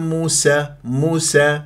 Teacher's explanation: مس مس مرققه بعدين تجيك الخاء المفخم مرتبه ثانيه